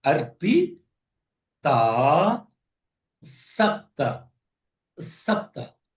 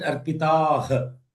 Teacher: even though it is written as Arpitah, but the correct writing is Arpita Sapta. Sapta. Because the ha is not pronounced.